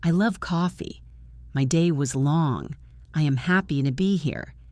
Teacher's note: Hear how my voice drops.